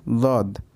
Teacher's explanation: দদের উচ্চারণ আপনার মুখের শুরুর দাঁতের সাইড থেকে উচ্চারিত হয়